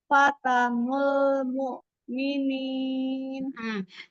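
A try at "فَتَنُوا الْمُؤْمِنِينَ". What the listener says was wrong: Di nulnya agak sedikit menebal. Yuk ditipiskan. Fata nol, enggak nol, nul. Fata nul mu'minin. Fata nul, enggak nol, enggak nol. Nu, menunjukkan sempurna, doma. Fata nul, fata nul. Lamnya tipis, bukan nol, nul. Fata nul mu'minin. Lam tipis. Iya, dilatih lam tipisnya ya.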